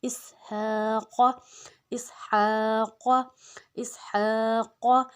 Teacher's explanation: اب ہا کو ہم نے حلق سے نکالنا ہے